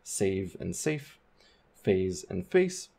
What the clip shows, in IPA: seɪv sĕɪf feɪz fĕɪs